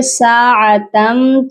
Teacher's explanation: تا کو میم مشدد سے ملائیں گے، غنہ کریں گے. ادغام ود غنہ ہو رہا ہے، اور ویسے بھی آپ دیکھ لیجئے کہ میم مشدد اور نون مشدد پر غنہ ہوتا ہے.